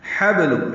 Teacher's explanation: ہا وسط حلق سے نکالیں گے، با ساکن پہ قلقلہ ہوگا